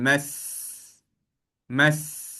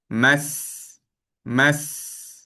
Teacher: kalau huruf sin ni kita datangkan sifat sin tu iaitu sifat safirnya